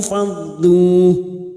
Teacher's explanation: Nun kecil di sini atau nun mikoyah yang bertemu nun sukun, maka harus kita samarkan dan mendengung selama 2 atau 3 harokat.